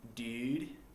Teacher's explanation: If you're from the South or the West, you're likely to have a very fronted oo